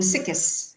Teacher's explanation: people tend to replace the x sound with a k sound